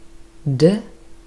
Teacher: very clear vibration here from the vocal cords. This is a voiced consonant.